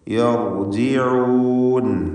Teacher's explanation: യർ എന്ന് പറയുമ്പോൾ റാഇന് തഫ്ഖീമാണ്, സുക്കൂനും തൊട്ടുമുമ്പിൽ ഫത്ഹുമുണ്ട് എന്നതുകൊണ്ട്.